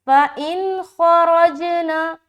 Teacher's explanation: جیم میں قلقلہ کرتے ہوئے را کو موٹا رکھ رہے